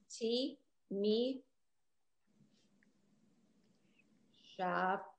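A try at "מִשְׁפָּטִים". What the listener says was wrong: So first of all, it's mish. Because that's in the middle of a word, the shva, the two dots are silent. So it's mish.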